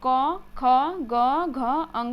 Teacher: क, ख, ग, घ, अंग जब हम लोग बोलते हैं तो ये ध्वनियाँ इसकी कहाँ से निकलती हैं, कंठ से होकर के निकलती हैं। ठीक है, कंठ यानी सबसे अंदर जो होता है उससे होकर के ध्वनियाँ निकलती है।